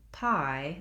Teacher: When we're saying pie, we have to slide and move on that I sound. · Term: diphthong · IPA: /aɪ/